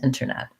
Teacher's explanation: if you do do the tea it has a little puff of air little release